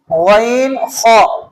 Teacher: ادا ہوتے ہیں حلق کے اس حصہ سے جو منہ کی طرف والا ہے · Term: حروف حلقی